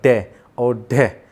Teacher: हमारी जो जीभ है वो मूर्धन्य से टकराई और एकदम से नीचे आ जाती है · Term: उक्षिप्त व्यंजन